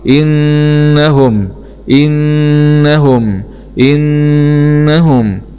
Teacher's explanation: إن هاء ضمه إنه. ميم سكون مع الإظهار الحلقي.